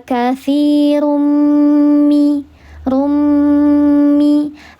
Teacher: Karena ada tanwin menghadapi salah satu huruf idgam ghunah yaitu huruf mim dileburkan disertai dengan ghunah yang paling sempurna tiga harakat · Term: idgham bighunah